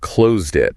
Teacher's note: the T sound almost disappears